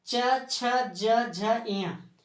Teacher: च छ ज झ इया बोलिएगा तो आपका जीभ जो है सो बार बार किसको टच करेंगे? तालु को। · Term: तालबी